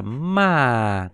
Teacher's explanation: ký hiệu giống như cái dấu huyền của mình nhưng mà chúng ta đọc là đọc từ cao xuống thấp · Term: thanh tư